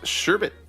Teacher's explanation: there's no r in the second syllable it's not sherbert